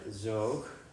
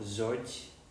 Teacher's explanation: So what you can see here for the word for bird, zoog, so in the plural, zoj, there is no actual plural ending. The only thing that's there is a palatalization. And like I told you, a consonant was palatalized when a front vowel, so I or E, was following.